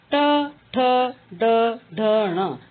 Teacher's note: जब हम इसका उच्चारण करते हैं तो इसका उच्चारण स्थान होता है मुर्धा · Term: ट वर्ग